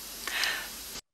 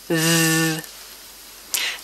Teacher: The sound comes from between my tongue and my top teeth. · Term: voiced consonant